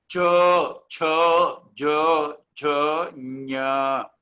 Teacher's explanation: तालव्यः ऊपरी जिह्वा तालु को लगती है।